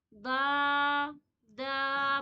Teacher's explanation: दाल बिल्कुल ही बारीक पढ़ी जाती है